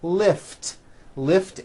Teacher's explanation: ends with an unvoiced T